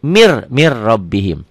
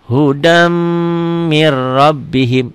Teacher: Hudam agak sedikit dengung dan ditahan. Ini idgham bigunah.